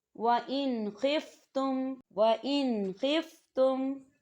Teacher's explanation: اب آپ خا کی مثال دیکھیں، وَإِنْ خِفْتُمْ، وَإِنْ خِفْتُمْ، تو نون ساکن ہے، نون ساکن کے بعد خا آ رہا ہے، تو یہاں بھی غنہ نہیں ہوگا، صرف نون کی آواز کو ہم ظاہر کریں گے اور غنہ نہیں کریں گے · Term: اظہار